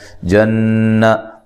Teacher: جن نون مشدد پہ غنہ ضروری ہے